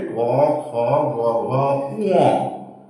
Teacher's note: কন্ঠ থেকে উচ্চারিত হচ্ছে বলে তার নাম হচ্ছে কন্ঠ ধনি